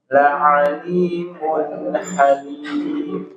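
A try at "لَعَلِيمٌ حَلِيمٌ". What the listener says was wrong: Idhar halqi itu nggak boleh di qalqalah ya. La'alimun halim. La'alimun halim. Mun halim. Jangan sampai mun halim, jangan. Mun halim. La'alimun halim. Nggak boleh ditempo juga. La'alimun halim. Jangan sampai ada mun. La'alimun halim. Nah, masih ada mun masih ada gitu. Jadi jelas.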